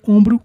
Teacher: Nós temos a palavra ombro, uma paroxítona com vogal nasal, formada por OM.